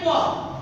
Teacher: স্পর্শ ধ্বনি, মানে দুটি ঠোঁটের সংস্পর্শে আমরা প উচ্চারিত হয়